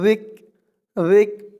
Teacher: জালের উচ্চারণটা একদম নরম করতে হবে, জিব্বার মাথা উপরের দাঁতের মাথার সাথে লাগবে